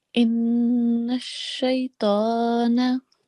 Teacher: we have to hold the nasal sound for 2 seconds